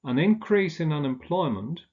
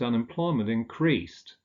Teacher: with the noun the stress falls on the first syllable with a verb on the second syllable